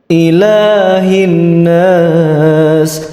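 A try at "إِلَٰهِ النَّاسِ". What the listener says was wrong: Di ayat ketiga salahnya juga sama, yaitu nun tasydid, kesalahan ke-8.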